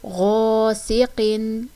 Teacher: یہاں پر ہم ایک الف کی مقدار کھینچ کر پڑھیں گے کیونکہ خالی الف کے پیچھے زبر آ رہی ہے تو یہاں پر الف مدہ کا قاعدہ ہو رہا ہے.